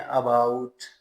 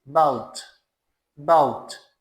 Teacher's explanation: अब इससे आगे जरा नोट करें आवाज, एक ABOUT लफ्ज है, ABOUT, हम इसको बोलते हैं अबाउट, but this is not अबाउट, it is बाउट, बाउट। शुरू में आ आपने बिल्कुल ना होने के बराबर बोलना है, बाउट, बाउट टर्न, जैसे हम कहते हैं बाउट turn, is अबाउट टू leave, is अबाउट टू leave, हो जाने वाला है, तो अबाउट नहीं कहना।